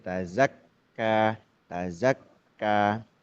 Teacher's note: huruf kaf itu huruf syiddah, huruf yang kuat tertahan